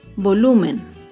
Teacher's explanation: Volumen se acentúa en la penúltima sílaba, pero no lleva tilde porque termina en N. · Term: palabra grave